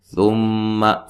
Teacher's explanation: میم مشدد پہ غنہ ضروری ہے